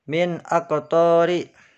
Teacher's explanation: nun sukun dibaca jelas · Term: idhar halqi